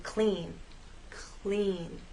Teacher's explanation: when L follows P or C it actually begins voiceless